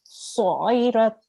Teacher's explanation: So you've got the throat sound there. The ayn is a throat sound, middle of the throat.